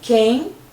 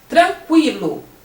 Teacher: Mas quando ele aparece, o QUA, o U aparece, aí você não fala que, nesse caso, é um dígrafo. Quando você fala quem, o QU tem o som de K, quem. Mas quando você fala tranquilo, o QU tem o som de quilo, o U aparece.